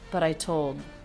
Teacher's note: The T is beginning a stressed syllable, so it's a true T.